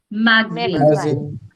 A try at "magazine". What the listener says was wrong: j नहीं है. There is no j. This is z sound.